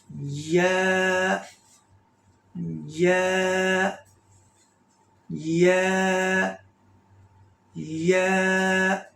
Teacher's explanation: یا کا مخرج بھی جیم کی طرح ہے، شین کی طرح ہے، جیسے زبان کا جو درمیانہ حصہ ہے، یہ زبان کا بالکل درمیان اور اس کے اپوزٹ اوپر جو تالو ہے، اس درمیانی زبان کے حصے کو اوپر والے تالو سے لگائیں گے تو یا ادا ہوگا